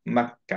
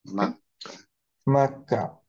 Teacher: এইখানে একটু খেয়াল করে দেখি, আমরা অ্যাকচুয়ালি যেহেতু এটা স্পেশাল হামস, এর জন্য আমরা মাক্কা এরকম বলবো না, আমরা অ্যাকচুয়ালি কমপ্লিটলি হামসটা বাদ দিয়ে দিব